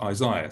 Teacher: you don't pronounce the h at the end it's just isaiah